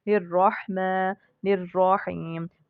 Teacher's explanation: را مشدد اور مفتوحہ ہو تو ہم اس کو پر پڑھیں گے